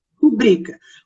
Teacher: O som dessa palavra é rubrica. Rubrica é uma palavra paroxítona, né? Ou seja, a penúltima sílaba dela que é a sílaba forte